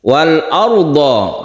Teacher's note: Wal arda, roknya sukun, rok sukun sebelumnya ada fathah, ini ditebalkan atau disebut rok tafkhim, rok tebal.